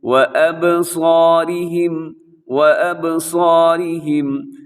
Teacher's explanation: صاد موٹا رکھنا ہے، الف بھی موٹی ہے، را باریک ہے، را کی نیچے حرکت ہے